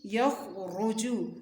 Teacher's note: خا کی آواز خوب موٹی ہوگی، را کی آواز بھی موٹی ہوگی